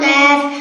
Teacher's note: 5 নম্বর মাখরাজ জিহ্বার গুড়া থেকে একটু আগে বাড়িয়া তাল বরাবর উপরের তালের সঙ্গে লাগিয়া মধ্যখান পেঁচানো কাফ।